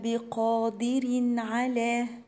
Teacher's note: تنوين وراء حرف العين إظهار